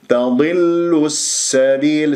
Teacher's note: سين لازم اجيبها بالصفير وبجريان للصوت والنفس